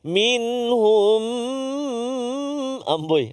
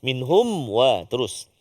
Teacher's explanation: Mim mati bertemu dengan waw. Dengung ke tak dengung? Tak dengung. Jelaskan bacaan kita. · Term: izhar syafawi